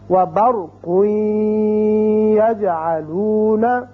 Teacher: قاف کے اوپر 2 پیش تنوین ہے، آپ نے ادغام کیا غننے کے ساتھ، بعد میں یا آ گیا.